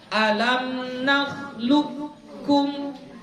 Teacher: qafnya betul-betul dihilangkan. Memang masuk langsung kepada huruf kaf. Jadi dibaca alam nakhluqukum. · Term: idgham mutaqaribain